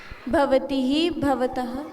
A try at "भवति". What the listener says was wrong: ही नहीं, उसमें विसर्ग नहीं होते। भवती